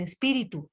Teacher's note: La mayor entonación o la mayor fuerza de voz está recaída en la antepenúltima sílaba. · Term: palabras esdrújulas